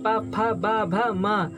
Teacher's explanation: प वर्ग के सभी वर्ण प फ ब भ म और उपध्यानीय अर्थात उ, इनका उच्चारण स्थान हुआ ओष्ठ।